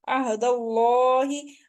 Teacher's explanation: आइन हल्की लेटर है, हल्क के दरमियान वाले हिस्से से पढ़ेंगे। अहदल्लाहि, अब ये शिबे मुस्तालिया है, यानी अल्लाह के नाम से पहले जब जबर आ जाती है तो उसको मोटा पढ़ते हैं।